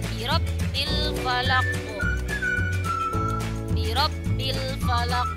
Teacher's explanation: Ya, harokat qafnya menjadi sukun, berarti membacanya memantul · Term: qalqalah